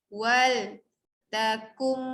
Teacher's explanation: Wal takum, yang pertama tu idgham. Okey, nun mati jumpa mim, kum kita bunyikan mim yang mim sabdu